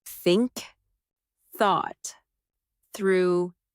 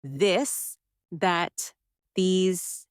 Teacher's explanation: For example, the TH sound in think or this. Put your tongue between your teeth and push air out for think. For this, your tongue touches the same position, but with your voice turned on.